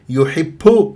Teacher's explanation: ب الباء شديد مجهور يحب لا غلط لا تطلع لي ب هواء لا يحب لا